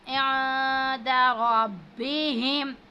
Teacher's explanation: اب نون ساکن کے بعد دال آ رہا ہے تو یہ حروف اخفا میں سے یہاں پہ ہم غنہ کریں گے اخفا کی صورت میں. عند ربهم را پر زبر ہے، اس کو پور پڑھیں گے ربهم جنہ.